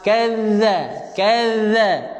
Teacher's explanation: Baca dengan lidah keluar. Huruf zal, lidah kena keluar.